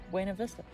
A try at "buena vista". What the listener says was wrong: Because it's spelled with an A, not an O.